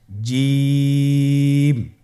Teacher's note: এর মাখরাজ হলো জিহ্বার মধ্যখান তার বরাবর উপরের তালুর সঙ্গে লাগিয়ে উচ্চারিত হয় · জিম হরফটি বারিক হরফ এটা উচ্চারণ করতে হবে তিন আলিফ টেনে